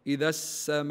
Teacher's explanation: كلمه السماء هذا يسمى مد واجب متصل ان مدوه اربع حركات نقول هكذا اذا السماء نعم اربع حركات نعم معنى مكالمه طيب